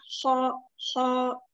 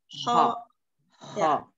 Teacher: diangkat pangkal lidahnya ya kho kho ada gesekan sedikit gesek kho